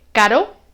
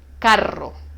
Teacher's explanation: suave y el sonido fuerte es cuántas veces toca el paladar con el sonido suave solo toca una vez y caro y con el sonido fuerte rebota toca varias veces